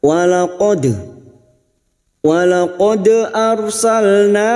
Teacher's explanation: Walaqad arsalna, ra sukun yang didahului fathah kita baca tafkim